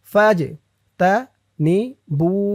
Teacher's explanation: জিম কলকলার হরফ, ধাক্কা দিয়ে পড়তে হবে